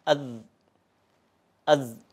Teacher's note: huruf za ketika disukun itu dia suaranya mengalir lembut. Artinya tidak ditahan apalagi dipantulkan ya. Za itu kalau kita sukunkan atau kita matikan kemudian kita ucapkan az ya.